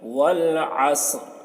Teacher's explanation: عین کو حلق سے ادا کریں گے، صاد کو موٹا کر کے پڑھیں گے